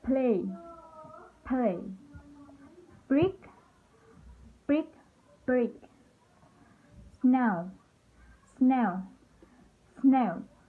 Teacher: the schwa vowel e, e is inserted between the two consonants that form the initial cluster of the word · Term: appendic vowel